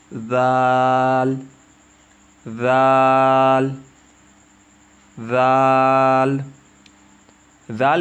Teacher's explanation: اس کا مخرج زبان کی نوک اور سامنے کے اوپر والے 2 دانتوں کے کنارے سے ادا ہوتے ہیں، یا یوں کہیں ثا اور ذال کی آواز ایک جگہ سے نکلتی ہے۔